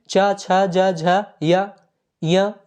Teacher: च, छ, ज, झ, य, ये सभी दोस्तों तालु के अंतर्गत आते हैं